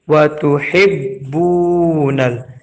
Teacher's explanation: बा को खींचा गया है एक अलिफ के बराबर क्योंकि यहाँ पेश के बाद जज़म वाला वाव मद्दा आया हुआ है।